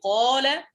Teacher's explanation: الألف في قال مفخمة لأن ما قبلها قاف مفخمة.